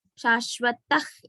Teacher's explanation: Visargam followed by sha, ish has to come.